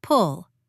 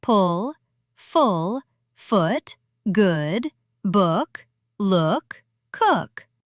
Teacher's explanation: For pull, your lips are slightly rounded, like you're about to drink from a straw, but the sound is quick. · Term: short OO